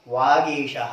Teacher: गा का उच्चारण स्थान कंठ है।